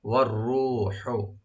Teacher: রাটাকে deep করে ১ আলিফ টানবেন আর হাটাকে অবশ্যই রাইট দিবেন গলার মাঝখান থেকে